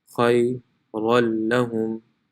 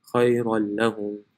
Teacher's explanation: So it will be pronounced khayran lahum. The noon is no longer pronounced.